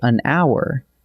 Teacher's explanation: the H is silent, so it actually begins with a vowel sound